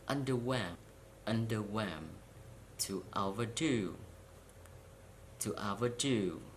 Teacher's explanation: For the compound verbs, the stress is on the second part, like adjectives.